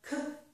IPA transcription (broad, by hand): k